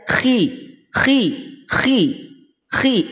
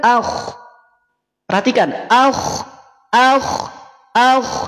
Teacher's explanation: pangkal lidah terangkat tetapi karena dia kasrah maka ketebalannya berkurang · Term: tafkhim nisbi